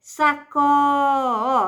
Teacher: sílaba tônica de sacola é o có. Então, ela é paroxítona e ele pede para marcar onde existe uma palavra que não é oxítona.